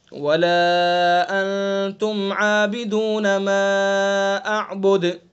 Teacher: ما اعبد دال کے اندر قلقلہ ہوگا